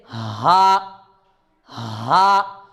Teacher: ہاں کا مخرج ہے حلق کا آخری حصہ اور سینے کا شروع والا حصہ، یہاں سے ہاں ادا ہوتا ہے، یعنی کہ حلق کا جو آخری حصہ ہے یہ والا اور سینے کا جو شروع والا حصہ ہے یہاں سے ہاں ادا ہوتا ہے، جیسے ہاں ہاں۔